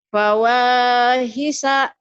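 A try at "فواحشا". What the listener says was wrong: Fawahisha. Shinnya tuh nggak keluar. Fawahisha.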